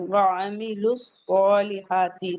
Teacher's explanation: سواد حروف مستعلیہ سے ہے، اسے ہیوی پڑھیں گے